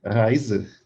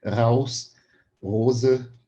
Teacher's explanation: o modo de produção, o ar vai vibrar, e vai ser aqui na úvula. A úvula, a nossa campainha que a gente tem aqui atrás na garganta.